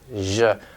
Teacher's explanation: So we have the she and then the zh, which is just like the sh and she, but with voicing. Zh, like decision.